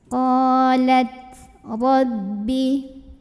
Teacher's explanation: Qalat gak ada ya, gak ada bunyi. Nah tapi dari segi angin, qalat punya sifat namanya hams. Jadi harus ada angin keluar.